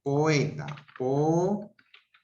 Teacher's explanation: Aquí, por ejemplo, veo lo siguiente. La O es una vocal abierta. La E es una vocal abierta. Entonces, en este caso, estamos hablando de una ruptura, o sea, un hiato. ¿Simple o acentual?